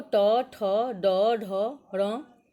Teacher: ट वर्ग देखो ट, ठ, ड, ढ, र, इसका उच्चारण स्थान मूर्धा है